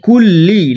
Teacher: কাফ, জিবের গোড়া হতে একটুখানি এগিয়ে, কুল্লি। লাম হচ্ছে জিবের আগা এবং ওপর তালুর সঙ্গে লাগাতে হবে, কুল্লি।